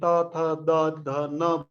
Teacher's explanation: जिब्रोको टुप्पोले दाँतलाई स्पर्श गरेपछि यी व्यञ्जनहरूको चाहिँ उच्चारण हुन्छ